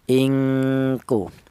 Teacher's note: Ada dengunya 2 harokat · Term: ikhfa